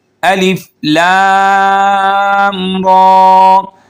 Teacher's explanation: اب یہاں پہ لام کے اوپر مد متصل ہیں، اس کو ہم 4 سے 5 الف کے برابر کھینچ کر پڑھیں گے۔ را کے اوپر کھڑی زبر ہے تو ہم 1 الف کے برابر اس کو کھینچیں گے